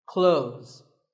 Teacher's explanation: When we say clothes, the TH in the middle can often be silent.